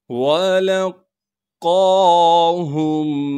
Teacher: قاف سے ملائیں گے، اس لیے کہ قاف پر تشدید ہے، قاف پر کڑا زبر ہونے کی وجہ سے قاف کو ایک الف کے مقدار کھینچیں گے اور قاف کو موٹا کر کے پڑھیں گے ، ہا کو میم سے ملانا ہے بغیر غننے کے، نون · لام کو قاف سے ملائیں گے، اس لیے کہ قاف پر تشدید ہے